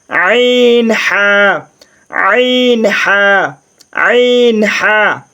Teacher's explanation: 2 নম্বর মাখরাজ হলকের মধ্যখান হইতে আইন হা